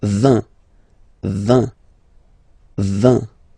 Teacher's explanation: this G letter is here, but you don't pronounce it, okay? And then final T doesn't exist phonetically either